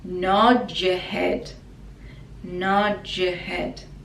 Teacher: it connects together and it's like a j sound